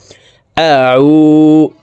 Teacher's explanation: আইনকে হালকের মধ্যখান থেকে চাপ দিয়ে উচ্চারণ করব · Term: আইনের মখরাজ